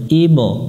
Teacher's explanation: বা অক্ষরের উপরে সুকুন আছে, কলকলা করতে হবে, অর্থাৎ প্রতিধ্বনি সৃষ্টি করতে হবে, আমরা মিনার চিহ্ন দেখে কলকলা করে নেব।